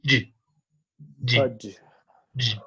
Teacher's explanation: But remember that this one is affricate. There is a combination of two constrictions, plosive plus fricative.